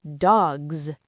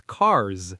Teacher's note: if the last sound of the word is voiced, the S becomes voiced too to match it. It turns into a Z sound. For example, dog, the last sound is G.